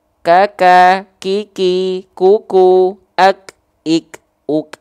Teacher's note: huruf kaf dia punya sifat namanya adalah hams, tapi dia bukan mengalir nafas ya, tapi hanya berupa percikan-percikan nafas saja. Kalau dia lebih dari kadar percikan, maka dia disebutnya takaluf.